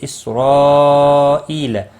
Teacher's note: مد متصل ہے، 4 الف کے برابر کھینچ کر پڑھیں گے۔